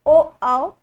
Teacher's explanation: यानी कंठ और ओष्ठ दोनों मिलके आपके ओ और आओ बोलते हैं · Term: कंठ ओष्ठ